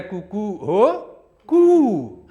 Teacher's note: अंत में प्लूत स्वर का उच्चारण करता है। पहले बोलता है तो ह्रस्व स्वर में बोलता है, बीच में बोलेगा दीर्घ स्वर में बोलेगा।